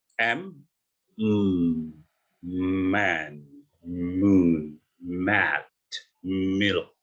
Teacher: M dan N itu namanya nasal sound, bunyi dari hidung. Mereka nggak keluar dari tenggorokan mulut kita, tapi keluar dari hidung.